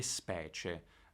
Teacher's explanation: In specie quella I non si pronuncia, è praticamente assimilata alla C